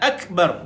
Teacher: mati kaf, keluarkan sedikit angin pada kaf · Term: hams